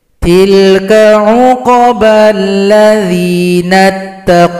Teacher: qaf tidak boleh dipanjangkan; Ia hanya memiliki kualitas qalqalah, sehingga dibaca singkat